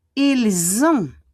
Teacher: the S will become a Z. Ils ont, and we don't pronounce the T.